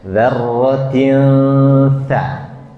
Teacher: Diikhfakan dua harakat, dzarratin. Jadi n-nya jangan kedengeran n.